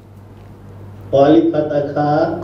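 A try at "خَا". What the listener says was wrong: খ আলিফ ফাতা খা না, খ মোটা,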